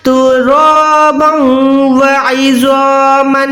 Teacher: रॉ को मोटा अदा कर रही हूँ क्योंकि यहाँ पर अलिफ को भी मोटा अदा करना है। रॉ पे ज़बर है तो वो मोटी होगी तो अलिफ भी मोटा होगा।